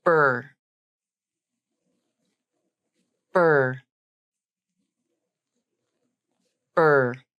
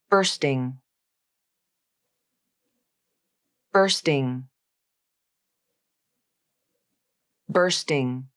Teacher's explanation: or bursting it's spelled b Ur s t i n g but the UR portion is pronounced as R not or